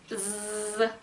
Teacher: 유성음이니까 목에서 소리가 나야 된다는 점 유의하시고요